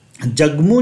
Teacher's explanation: उसी तरीके से जगमू जो हम बोले तो इस ग जो पहले रहा और इस म जो रहा, तो इस म के कारण इस बीच वाले ग में हल्का सा नासिक्यत्व आ जाता है